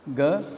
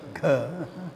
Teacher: Less breath, Ga. Gha, more breath.